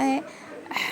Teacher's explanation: हलक के बीच के हिस्से से है अदा होता है